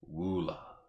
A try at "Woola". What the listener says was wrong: Yeah, Ula. The W is silent.